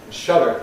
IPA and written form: ˈʃʌdɚ (shudder)